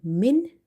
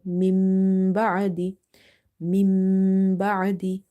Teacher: Instead of saying min, we have to say mim ba'adi, mim ba'adi by doing nasalization.